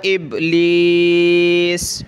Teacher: قلقلہ یعنی اس کو کرتے وقت ہم نے تھوڑا سا جھٹکے کی طرح پڑھنا ہے